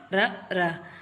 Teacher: மேல் அண்ணத்தில் முதல் பகுதியை தொட்டு வரடுவதால் ரகரம் தோன்றுது. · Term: இடையின ரகரம்